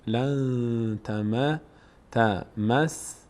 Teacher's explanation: نون از مخرج خودش ادا نمیشه، لن از بینی ادا میشه. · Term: اخفا